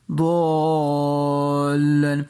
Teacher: ضاد حرف مستعلیہ میں سے اسے ہم پور پڑھیں گے، یعنی موٹا کر کے پڑھیں گے۔ الف کے اوپر مد ہے، بری مد، اس کو ہم 4-5 سیکنڈ کے لیے کھینچ کے پڑھیں گے، ضالن۔